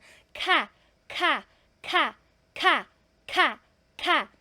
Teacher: ang tamang pronunciation basta aspirated consonant siya ay gagalaw po ito especially yung yung initial sound niya ka ka ka ka ka · Gumagalaw po siya kasi breathy po siya.